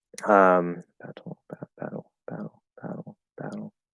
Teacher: I will use usually more of a L-colored high schwa in a case like this. But if you want to kind of just do a straight half L or do a schwa that's L-colored, you can do that.